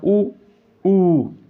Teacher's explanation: अब छोटा ऊ बड़ा ऊ है, ये ओष्ठ्य वर्ण है, मतलब जैसे आप ऊ ऐसे करके आप बोलेंगे तो आप देखेंगे कि इसमें होंठ का उपयोग ज़्यादा हो रहा है, होंठ गोलाई लेके मतलब उच्चारण कर रहे हैं। जैसे हम सीटी मारते हैं उस तरह से वर्ण का उच्चारण होता है, राइट।